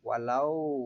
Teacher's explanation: Maka berlaku hukum bacaan mad layyin. Cara membacanya adalah dibaca lunak sepanjang 2 harokat.